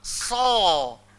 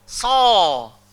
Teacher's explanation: hujung lidah mesti langgar belakang gigi yang bahagian bawah, kemudian kena ada gemuknya. Sa. Dah tak ada kena dengan bibir juga. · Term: huruf sad